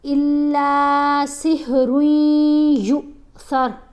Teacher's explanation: یہاں پر یا کو لمبا نہیں کرنا, یہ اس کے اوپر حمزہ ساکن ہے نا, تو یا کو آپ تھوڑا جھٹکا دے کے پڑھیں گے